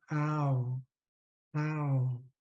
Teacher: when we have ah and oo back to back, it gets blended into ow